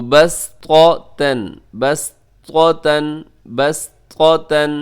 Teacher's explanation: طا ہے اور تا دونوں اکٹھے آ گئے، ایک ہے بہت زیادہ موٹا پڑھا جاتا ہے اور دوسرا تا جو ہے وہ بہت باریک ہے